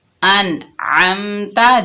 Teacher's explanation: دیکھیں نون کو ہم ظاہر کر کے پڑھ رہے ہیں، یعنی اقفا نہیں ہو رہا، نہ کوئی غنہ ہو رہا ہے نہ کوئی اقفا ہو رہا ہے. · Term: اظہار